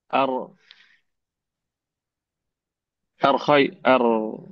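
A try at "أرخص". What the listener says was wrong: Ya-nya mah dibuang, tak guna ya.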